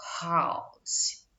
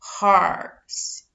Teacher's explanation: o H é pronunciado com uma sonoridade aí próxima do R